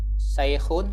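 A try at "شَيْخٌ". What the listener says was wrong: Shin, sha. Sha. Syaikhun.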